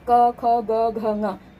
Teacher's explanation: ये क वर्ग जो है ये इसका उच्चारण स्थान कंठ होता है, तो 5 ही वर्णों का उच्चारण स्थान भी कंठ ही होगा।